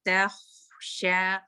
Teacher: تا لائٹ لیکن خوا ہیوی ہے. تخشا اور ایئر کے ساتھ بھی تخ، اس کی جو خوا کی آپ کا ایئر ہوتا ہے وہ واضح رہے.